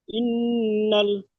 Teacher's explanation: নুনের উপর তাজদিদ এসেছে, নুন তাজদিদ গুন্না করা ওয়াজিব, নাকে তুলে এক আলিফ পরিমাণ গুন্না করে পড়তে হবে। নুনের উপরে যাবার সে যাবাটি হারাকাত, হারাকাতের পক্ষে তাড়াতাড়ি পড়তে হয়, টান দেওয়া নিষেধ।